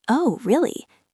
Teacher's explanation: Notice how the voice goes down on O. And then scoops up on the word really.